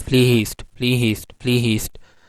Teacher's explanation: But this glottal catch at the beginning of these words isn't written in these words and is easy to overlook. However, when we have two words and the first word ends with a vowel and the second starts with a vowel, then a glottal stop is something obvious between these two words. For example, if we say flee east, so sometimes it is perceived as flee east, flee east, flee east.